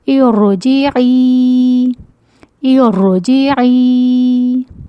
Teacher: اس را ساکن کو ہم موٹا پڑھیں گے کسرہ عارضہ کی وجہ سے